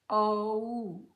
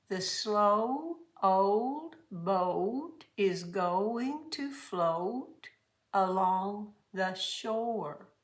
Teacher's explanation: Long O sound is two sounds.